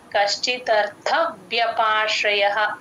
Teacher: మీ పైన టీత్ కింద లిప్స్ కి టచ్ అవ్వాలి అప్పుడే కరెక్ట్ గా వ్య వినిపిస్తుంది